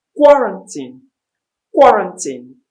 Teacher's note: Quarantine. The stress is in the first syllable.